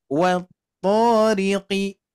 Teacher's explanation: to-nya ingat jangan sampai kepanjangan. Tetap konsistenkan di 2 harakat ya.